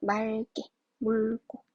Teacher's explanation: 리을 기역은 기역 앞에서 리을로 발음을 한다